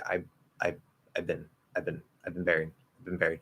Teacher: So that "been" can kind of, in fact, the V will probably disappear. I'll say, I've been buried, I've been buried," and that "been" can be pronounced very, very, very short and quick.